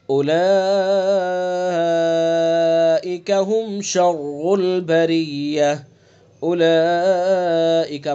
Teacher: اولئک مد کریں گے کم سے کم 2 الف، زیادہ سے زیادہ 4 الف، مد متصل ہوگا اس کے اندر.